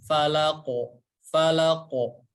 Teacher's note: Dikarenakan huruf qaf memiliki sifat tebal, maka si pantulan suaranya itu lebih ke fathah ya, atau lebih ke o. Falaqo, falaqo, bukan falake, falake, falake, tapi falaqo, falaqo ya. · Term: qalqalah